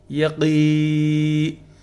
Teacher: قین، قاف جو ہے اس میں حرف مدہ ہے، چونکہ قاف کے نیچے زیر ہے اور یا ساکن اس کے بعد ہے، تو یا ساکن سے جو ہے نا جب آئے گی زیر والے حرف کے ساتھ تو کیا ہوگا، حرف مدہ ایک الف کے برابر کھینچا جائے گا. یقی، تو یہاں نون کے نیچے زیر ہے لیکن وقف کیا جا رہا ہے یہاں پر، تو لہٰذا اس کو یقین ہم کہیں گے.